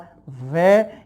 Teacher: ये वै बचा हुआ है, और वै जो बनता है ये उच्चारित होता है दांत प्लस ओष्ठ से, और इन दोनों के योग से बनने के कारण इसको हम कहते हैं दंतोष्ठ वर्ण।